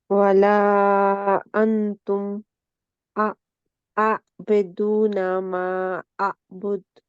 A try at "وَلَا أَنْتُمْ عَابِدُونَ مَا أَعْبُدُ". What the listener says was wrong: जी हमजा है जी, आ नहीं है।